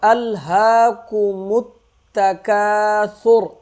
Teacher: کاف کو 1 الف کے برابر کھینچیں گے، را کو موٹا کریں گے